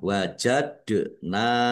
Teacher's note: dal sukun bacaan qalqalah dibaca memantul ditampakkan pantulannya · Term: bacaan kolkolah